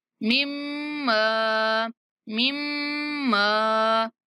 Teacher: مشدد میم پر غنہ کریں گے